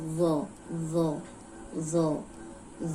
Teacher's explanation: اوپر سامنے کے جو 2 دانت ہیں ان کے کنارے پہ زبان رکھ کے بولیں گے وہ، وہ، وہ۔